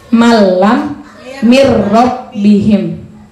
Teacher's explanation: Ee kita sudah belajar berarti hukum bacaannya adalah Idam bila gunah cara bacanya tidak boleh didengungkan harus masuk tanpa dengung